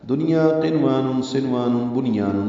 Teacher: ان میں اظہار مطلق ہوتا ہے، یعنی نون صاف پڑھا جاتا ہے، واضح یعنی اظہار ہوتا ہے.